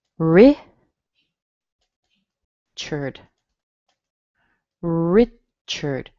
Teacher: Notice the A in here sounds like a schwa. Richard. It's connected with an R, but it has a schwa in there.